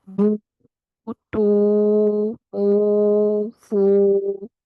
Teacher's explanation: वाव साकिन आ जाए तो फिर यहाँ पर वाव मद्दा होगा, यानी दो हरकत जितना इस मद को हम खींचेंगे। बा पेश वाव बू टू ऊ फू, इस तरीके से पढ़ते हैं।